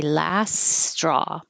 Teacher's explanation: That was the same vowel, last straw. So you can skip that T and just say last straw. Connect those together.